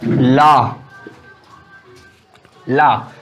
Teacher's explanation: पार्श्विक व्यंजन में बोलते समय जीवा के दोनों ओर, जीभ के दोनों ओर से वायु निकलती है, तो उसे हम पार्श्विक व्यंजन कहते हैं।